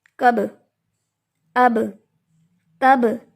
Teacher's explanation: بالکل انکانشیسلی ہونٹ آپس میں مل کے جدا ہو رہے ہیں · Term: قلقلہ